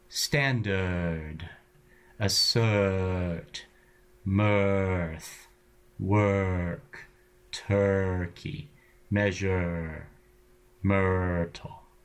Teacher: the r exerts a kind of gravity on the vowel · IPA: /r/